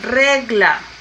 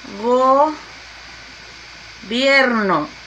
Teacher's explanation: llevan su mayor fuerza de voz en la penúltima sílaba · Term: palabras graves